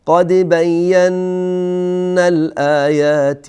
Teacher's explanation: یک نون ساکن با نون دیگری در هم ادغام میشه و اینجا ادغام با غنه هست